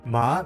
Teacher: Second tone, rising. Ma means hemp, said with rising tone, like asking a question.